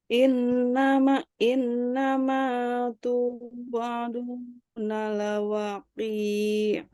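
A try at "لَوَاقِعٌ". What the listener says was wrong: Ki-nya pendek. Lawaqi'. Lawaqi'. Wa panjang. Lawaqi'. Lawaqi'.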